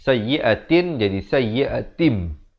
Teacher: Iqlab adalah kita menukar daripada bunyi nun kepada bunyi mim.